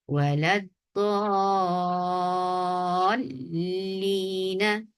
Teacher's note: وَلَضَّالِّينَ، یہ اس پھر لام کے اوپر جب دعات کو 6 کاؤنٹس لانگ کر لیا، اس کو ملاتے ہوئے لام کے اوپر نبر کریں گے تاکہ لام دونوں لام واضح طور پر ان کی ادائیگی ہو سکے